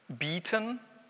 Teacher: I ist betont, ist lang, ist gespannt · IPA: bi:tən